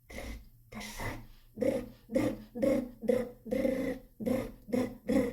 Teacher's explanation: тут ми просимо дитину добавити голосові складки